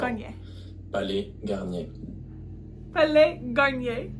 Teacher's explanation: S at the end of Palais should be silent